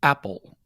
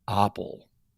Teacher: we say apple with a glottal stop not apple with no glottal stop